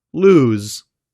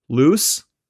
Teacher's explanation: The z is a voiced consonant, so the vowel sound before the z is typically longer than before its voiceless counterpart